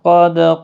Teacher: دال ساکن پر قلقلہ ہوگا، قاف پور بھی پڑھا جائے گا، حروف مستعلیہ کا حرف ہے۔